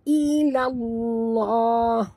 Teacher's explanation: lam pada lafzul jalalah tengah-tengah ini dibaca tebal kerana lam berbaris di atas